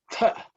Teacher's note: the second letter in the tha varga, which is aspirated